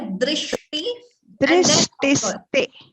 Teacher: That sh should be clear. It shouldn't be heard as dris. There is no s there.